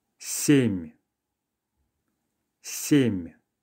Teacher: it's just a matter of softening the last consonant. If it helps you, you can try making it almost a nasal sound.